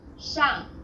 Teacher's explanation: The pronunciation for the famous city Shanghai is 上海, the first syllable here is made of an initial 诗, and a final ang, and a fourth falling tone. 上, The second syllable is made of an initial he, and a final ai, and a third falling then rising tone.